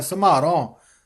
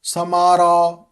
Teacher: ਸੰਭਾਰੋ ਇਸ ਤਰ੍ਹਾਂ ਉਚਾਰਨ ਨਹੀਂ ਕਰਨਾ, ਸੰਭਾਰੋ। ਮੰਮੇ ਦੇ ਪੈਰ ਵਿੱਚ ਅੱਧਾ ਹਾਹਾ ਵੀ ਉਚਾਰਨ ਕਰਨਾ ਹੈ, ਸੰਭਾਰੋ। ਸਮਾਰੋ ਇਸ ਤਰ੍ਹਾਂ ਉਚਾਰਨ ਨਹੀਂ ਕਰਨਾ।